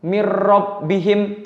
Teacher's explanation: selanjutnya yaitu mirrobbihim mirrobbihim ya nun sukun bertemu dengan rok mirrobbihim tidak mendengung tapi langsung masuk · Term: idgham bilagunnah